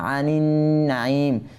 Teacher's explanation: আনিন নাঈম, নুন এরপরে নুনে মুশাদ্দাদ হয়েছে, ঠিক আছে, নুনে মুশাদ্দাদের কারণে এখানে গুন্না হবে। আনিন নাঈম, মাদ্দা আরিজ হয়েছে, ঠিক আছে।